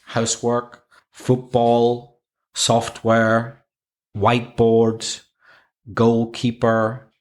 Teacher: when you have a compound noun like house work football software whiteboards goalkeeper the stress usually comes on the first syllable